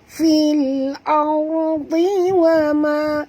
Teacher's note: ra sini mati, huruf sebelumnya baris atas kena baca tebal